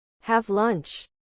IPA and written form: ˌhæv lʌntʃ (Have lunch)